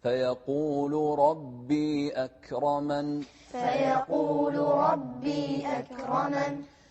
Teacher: أكرمن لا تقلقلون الكاف